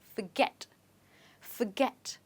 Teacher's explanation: the stress in this word is on get